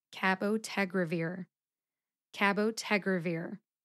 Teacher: that second A will sound like a schwa A